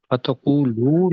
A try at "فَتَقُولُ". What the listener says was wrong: دوبارہ پڑھیں. فتقولو، لمبا نہیں کرنا لام کو.